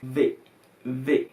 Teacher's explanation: lábio dental, que é quando o encontro do lábio inferior com os dentes superiores